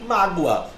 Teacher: Perceba que a palavra mágoa tem como a sílaba tônica o má, que é uma paroxítona. E ela terminou nesse ditongo, o gua, mágoa.